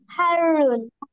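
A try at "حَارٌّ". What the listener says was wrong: রার মধ্যে কিন্তু তাসদিদ আছে, দুইবার উচ্চারণ হবে।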